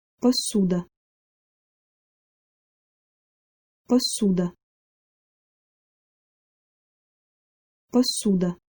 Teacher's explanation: When pronouncing this word, all three consonant sounds are hard. Also make sure to note that the first vowel, o, is reduced.